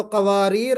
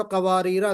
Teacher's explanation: قواریر پر جب آپ رکیں، قواریرہ پہ جب آپ رکیں گے تو قواریر اور قواریرہ دونوں طرح رک سکتے ہیں. لیکن جب وصل پڑھیں گے، کانٹینیو کریں گے، تو پھر الف بالکل بھی نہیں پڑھا جائے گا، قواریرہ من فضة پڑھیں گے.